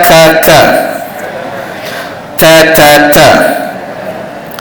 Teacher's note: Huruf ta tekan pada gusi atas.